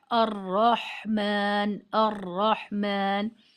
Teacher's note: 1 ٹرل یہ ہے کہ آپ جب الرحمن پڑھیں تو ایک ٹرلنگ، ایک دوہری آواز، شیورنگ، کپ کپاہٹ را کی ادائیگی میں سنائی دینی چاہیے